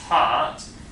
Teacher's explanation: For example, we Dutch people tend to leave out aspiration. So an English person will say part with aspiration